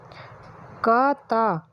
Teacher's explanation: क, ता अघोष अल्पप्राण ध्वनि है।